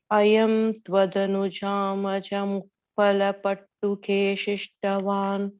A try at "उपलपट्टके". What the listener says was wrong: You're saying pattuke, you're saying it's upalapattake pishtavan. I think and the reason you kind of went off a little bit is tvadanujama jam. So if you say it as ayam tvadanujama jam upalapattake pishtavan.